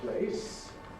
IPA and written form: pleɪs (place)